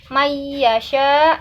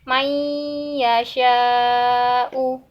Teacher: jadi ditahan dulu supaya sempurna ya contoh-contoh ini may yasha nah kalau hanya sebentar mayyasya itu belum ghunnah tapi kalau misalnya ditahan may yasha uh nah itu baru disebut dengan ghunnah